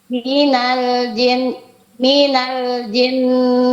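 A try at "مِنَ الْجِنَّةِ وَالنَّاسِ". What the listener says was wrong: Nanya jangan dipanjangkan ya, Bu ya.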